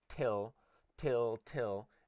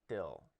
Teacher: and say still and you will be producing this right here you'll be producing till without aspiration